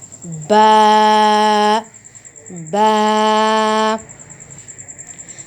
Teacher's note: دونوں ہونٹوں کو آپس میں ملانے سے